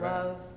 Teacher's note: unstressed first syllable, stressed second syllable, it's iambic